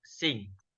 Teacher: This sound is produced by raising the back of the tongue to the soft palate or velum. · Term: eng